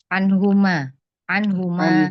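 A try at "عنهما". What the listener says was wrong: anhuma. Iya, anhuma.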